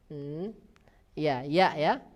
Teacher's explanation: Huruf ya ini juga keluar dari bagian tengah lidah sama dengan saudaranya yaitu jim dan shin.